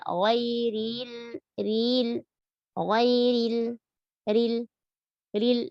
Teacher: Lalu kata ri tipiskan, ghairil, ril, ya, tipis. Ro tipis dan sempurnakan kasrohnya dan tidak boleh isba.